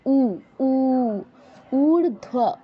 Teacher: প্রথম অক্ষরটি একটু দীর্ঘ করতে হবে, যেহেতু দীর্ঘ উ আছে। ঊর্ধ্ব, উ একটু দ্বিমাত্রায়, অর্থাৎ আমরা একমাত্রার যে অক্ষরগুলো সেগুলো যতটুকু সময় যাবত উচ্চারণ করি তার থেকে একটু বেশি সময় দিয়ে আমরা উচ্চারণ করব।